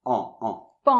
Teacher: Donc ça se lit comme si c'était P-A-N, c'est-à-dire pan, avec la nasale qui ressemble à un A